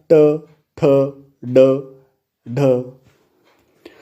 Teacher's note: तर मित्रांनो, इथे रू या वर्णाचा उच्चार करताना जिभेचा शेंडा वरच्या टाळूच्या अर्थात मूर्धा या कडक भागाला स्पर्श करतो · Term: मूर्धन्य